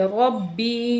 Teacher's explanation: را کو اوپر زبر ہے تو را کو موٹا کر کے پڑھیں گے